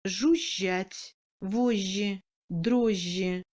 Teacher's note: Le G doublé à l'intérieur du mot se prononce comme un J long mouillé